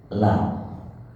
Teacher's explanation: La nekuk, ujungnya kena ke langit-langit atas.